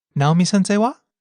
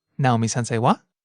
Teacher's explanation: So using someone's name and attaching wa with rising intonation is a very common way to ask someone a question that they just asked you, or to ask someone about a topic being discussed.